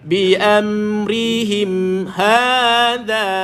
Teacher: Ha dua, dha dua. Dha macam biasalah, lidah keluarkan sikit, sentuh dekat gigi atas.